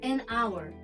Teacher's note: Hourda h harfi bo'lgani bilan hour o'qilyapti, ya'ni unli tarzda o'qilyapti. Shuning uchun biz "an" qo'yamiz.